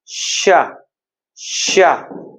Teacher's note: इस शब्द को बोलने में सीटी निकलना चाहिए आपके मुख से, तभी तो लोग बोलते हैं सीटी वाला सा।